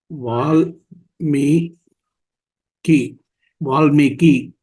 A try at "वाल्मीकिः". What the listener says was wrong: வால்மீகி. அந்த அந்த விசர்க்கத்தையும் சேர்த்துக்கோங்க.